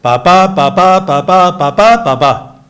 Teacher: lehenengo silaba azentu gabe, bigarrena, osea, bikoitiak azentuarekin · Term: pentametro janbiko